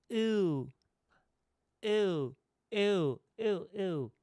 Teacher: your tongue is like kind of really high in back